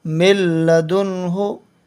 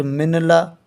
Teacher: ادغام لام یعنی لام جو آئے گا اس کے متعلق بتاتے ہیں کہ یہاں پر لام آنے سے غنہ نہیں ہوگا